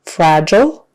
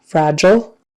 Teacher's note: So that G in the middle is a J sound, and the ILE, we say it like an ul